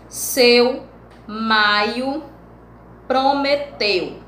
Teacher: Nós temos primeiro a vogal e depois a semivogal. É como se eu tivesse no topo e descesse.